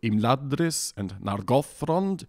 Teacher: and so according to the pronunciation rules which we've been told, they should both be stressed on that second to last syllable